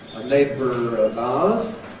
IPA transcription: ə ˈneɪbr̩ əv aʊəz